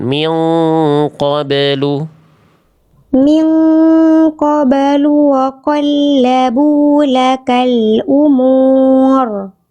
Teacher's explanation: Rohnya tebal. Kan rohnya sukun nih. Sebelumnya dahului vokal u, tebalkan. Kurang tebal sedikit.